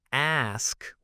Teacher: The common mistake here is transposing the S and K sounds. So instead of ask with the S coming first, it often comes out as X, where the K sound kind of precedes to S or they're just swapped around.